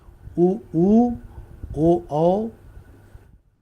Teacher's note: उ उच्चारण करने में और ओ उच्चारण में आपको क्या करना पड़ेगा आपको अपने होठों को वृताकार करना पड़ेगा